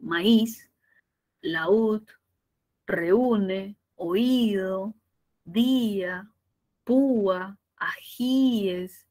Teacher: una vocal abierta al lado de una cerrada y cuando la cerrada tiene la mayor fuerza de voz automáticamente se separa y se coloca la tilde esa rayita gráfica eso es lo · la mayor fuerza de voz va en la vocal cerrada. Eso genera separación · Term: hiato acentual